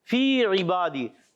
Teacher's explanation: فی میں یا مدہ, اس کو بھی ایک الف کھینچنا ہے